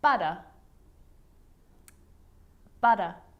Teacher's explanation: the r at the end of the word is not pronounced